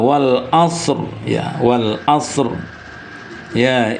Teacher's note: Jadi wal asri maka bunyi rnya yang disukunkan ini juga tebal.